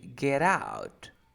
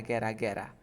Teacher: t is between two vowel sounds you pronounce like r